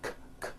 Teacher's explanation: Break ends with an unvoiced K sound. K, k. There's no voicing on that K.